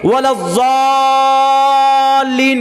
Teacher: کم سے کم 4 الف 5 الف اس کو کھینچتے ہیں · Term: مد لازم حرفی مثقل